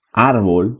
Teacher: una palabra grave suena más fuerte en la penúltima sílaba